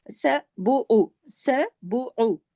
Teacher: با پیش بو، عین پیش او، ایک ایک حرکت ہے، بس ایک ایک حرکت پڑھا جائے گا